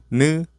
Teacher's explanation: the tip of the tongue touches the upper gums